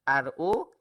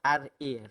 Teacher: ra yang tebal ialah RO, manakala ra yang nipis ialah RA